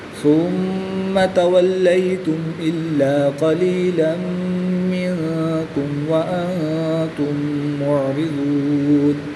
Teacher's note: یہاں پر ادغام شفوی ہوگا، وقف کی حالت میں یہاں پر مد عارض ہوگی، 2 اڑائی الف تک کھینچ کر پڑھیں گے